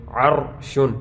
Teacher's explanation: ہم نے پڑھا تھا را ساکن ہو اس سے پہلے حرف پر زبر یا پیش ہو تو را کو پر پڑھیں گے. عرشن یہ را ساکن ہے، اس سے پہلے حرف پر زبر ہے تو یہاں پر بھی را کو پر پڑھیں گے.